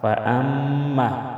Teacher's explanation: فأما میم مشدد میں غنہ کریں گے